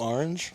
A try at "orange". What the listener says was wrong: I like how you say orange. There's a lot of emphasis on the R. Orange.